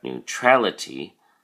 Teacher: notice that the emphasis or stress is now on the A